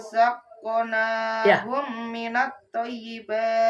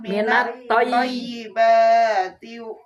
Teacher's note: Toy ditahan, toy agak lama.